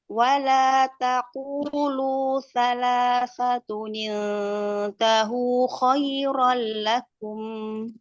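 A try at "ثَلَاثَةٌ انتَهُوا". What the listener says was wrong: Salasatun, coba ditipiskan lagi ikhfa nun sukun ketemu taknya.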